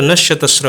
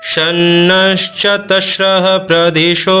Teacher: शब्द बनाते हैं तो नत श्र हो रहा है क्यों क्योंकि विसर्ग के आगे है च तो च से जब जुड़ेगा तो क्या होगा तालव्य श का वहां पर उच्चारण होता है